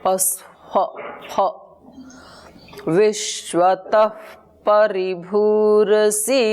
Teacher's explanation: जो विसर्ग हैं, जो दो गोल बिंदियां लगी हैं, उसका उच्चारण फकार जैसे होगा।